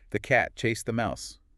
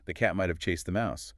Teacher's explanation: the heavy beats on cat and mouse dictate the rhythm. Everything else is just filler that gets compressed between those beats.